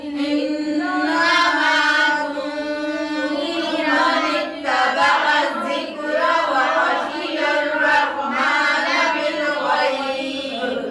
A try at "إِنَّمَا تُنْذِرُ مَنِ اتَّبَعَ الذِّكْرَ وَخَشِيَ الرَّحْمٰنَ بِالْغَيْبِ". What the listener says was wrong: देखिए तुंज़िरा नहीं है तुंज़िरू है दोबारा से पढ़ें